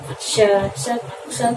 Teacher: जैसे श को बोलने के लिए हमारी जो है प्राणवायु घर्षण करती हुई बाहर निकलती है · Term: उष्म व्यंजन